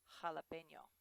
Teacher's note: the letter J in Spanish does sound like an H but it's actually a little bit harsher than we say it in English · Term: Spanish je